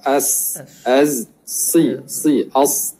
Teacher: Pandangan kedua menyatakan hujung lidah bersentuhan dengan bahagian belakang pangkal gigi seri bawah. Dia letak di bawah.